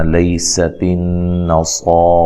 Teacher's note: تن یہاں نون مشدد پہ غنہ ضروری ہے۔ صاد کو بھی اور را کو بھی دونوں کو خوب موٹا کرنا ہے · سین کو باریک سیٹی سے ادا کرنا ہے